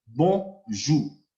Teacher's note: En el criollo haitiano sacamos la R y quedamos con bonjour para decir buenos días.